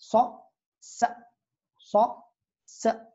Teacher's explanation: c'est une fricative sourde emphatique également, mais il s'agit d'une lettre sifflante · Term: l'emphatique du sin